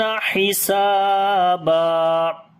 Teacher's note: ہا کو گلے کے درمیان والے حصے سے پڑھیں گے